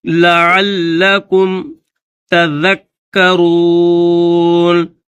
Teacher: لعل، لام کے بعد یہ عین ہے، پھر یہ لام ہے، اور عین کے بعد جو لام ہے اس لام کے اوپر تشدید ہے تو عین کو لام کے ساتھ ملا کر پڑھیں گے، اور لام کو دبا کر سختی کے ساتھ پڑھیں گے